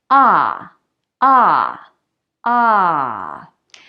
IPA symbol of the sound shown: a